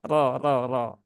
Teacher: dia berbaris fathah maka rnya dibaca dengan tebal ya